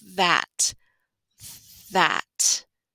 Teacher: The vocal sound sounds like it's coming from the TH, but it's really coming when you're pulling your tongue away, making the A sound in cat.